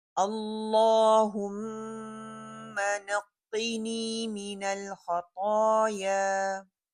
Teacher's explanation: मिनल खताया, नल नल नहीं करना, लाम जो है वो कलकला नहीं है। खा और ता दोनों मोटा पड़ा जाएंगे और एंडिंग जो है टू काउंट होगी